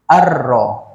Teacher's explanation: bacaan Syamsiah itu kita hilangkan bunyi bunyi lam lah masuk terus pada huruf yang ketiga · Maka untuk Syamsiyah ini kita akan hilangkan huruf lam.